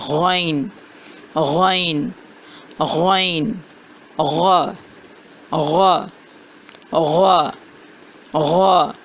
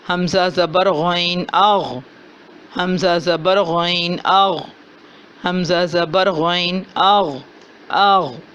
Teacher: غین کی ادائیگی ادنی حلق سے ہو رہی ہے، یعنی کہ جہاں زبان ختم ہو رہی ہے اور حلق شروع ہو رہا ہے، حلق نمبر 1 ہے، حلق کا پہلا حصہ ہے، وہاں سے غین کی ادائیگی ہو رہی ہے اور اس کی صفت ہے کہ اس کو موٹا پڑھا جاتا ہے۔